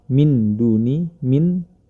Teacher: nun sukun bertemu dengan huruf Dal maka dia dibaca samar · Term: hukum bacaan Ikhfa